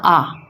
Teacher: ठीक है, पीछे वाला भाग, जब भी हम आ का उच्चारण करते हैं तो थोड़ा पीछे वाला हमारे जिह्वा का भाग टच होता है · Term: पश्च स्वर